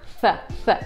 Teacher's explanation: когда мы между зубами ставим язык – th, th, и продуваем его